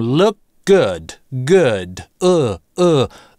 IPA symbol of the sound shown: ʊu̯